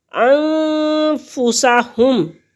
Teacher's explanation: 2 حرکت کے برابر ناک میں آواز کو چھپائیں گے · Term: غنہ